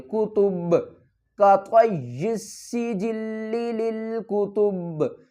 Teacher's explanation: با کے اوپر کیا ہم کریں گے، قلقلہ کریں گے۔ کس طرح قلقلہ کریں گے کہ با کو ہم ہلا کر پڑھیں گے